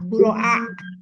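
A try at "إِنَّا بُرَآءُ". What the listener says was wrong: Lama-lama tambah pendek di telingaku ya.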